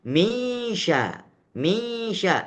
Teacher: Hanya hilang sifatnya 50%. Nun masih terdengar. Gunnahnya masih terdengar. Tapi juga sudah bercampur dengan sifat huruf sya. Sehingga di sini disebut dengan idgham kamil saja.